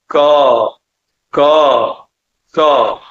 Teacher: क के उच्चारण में आपके कंठ में एक स्पंदन होगा